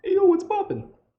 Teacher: the what's poppin actually winds up being one conjoined word where the P is over enunciated and so is the N